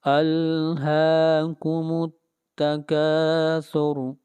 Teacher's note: را کو یہاں پر موٹا پڑھا جائے گا اس لیے کہ را سے پہلے پیش آ رہی ہے